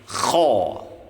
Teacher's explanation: harus dengan ngorok dan suaranya tebal karena kha itu huruf isti'la juga. Huruf yang harus diucapkan dengan mengangkat pangkal lidah.